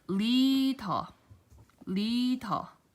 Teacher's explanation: Okay, so if the lium is in the very beginning of the letter, then, or of the word, then your tongue has to firmly press against the roof of your mouth right above the upper teeth, and then retracts